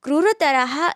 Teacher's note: આપવામાં આવ્યું છે એને આપણે જે આપણે બે ટપકા કહીએ છીએ એને વિસર્ગ તરીકે ઓળખવામાં આવે છે આનો ઉચ્ચાર આપણે સહેજ હ વર્ણના જેવો કરીએ છીએ